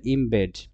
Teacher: দুইটা ঠোঁট দিয়ে উচ্চারণ করতে হয় সেগুলোকে আমরা ইন্টারচেঞ্জ করতে পারি যেমন এম আর বি এই দুইটা কিন্তু বাইলেবেল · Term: বাইলেবিয়াল